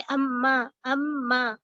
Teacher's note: मीम की आवाज double आ रही है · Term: तशदीद